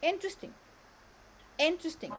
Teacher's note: the first syllable here receives the stress, so it's louder, longer.